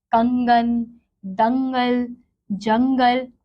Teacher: अब अगला है हमारा अनुस्वार। इसका उच्चारण करते समय नाक से ध्वनि निकलती है